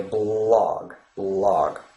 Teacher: the one in the word blog is it's light L is formed as I already described by pressing the tip of